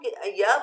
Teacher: आपने देखा य में जीवा ने तालु को छुआ, य, और जब वायु निकली है हमारी तो बहुत धीरे धीरे आराम से निकल रही है, इसके लिए वो अंतस्था कहलाता है।